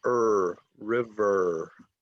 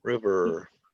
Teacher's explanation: it's called a rhotic r so it's er river if you pronounce it in the back of your mouth